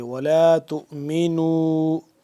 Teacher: تا حمزہ پیش تو تھوڑا سا جھٹکا دیں گے، میم زیر می، تو می، نون واو مد پیش نو، مد ہے چھوٹی سی مد ہے تو اس پہ ہم کیا کریں گے، 2 سے 3 الف کے برابر اس کو لمبا کریں گے